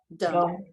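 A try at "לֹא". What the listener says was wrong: I want to hear the nun.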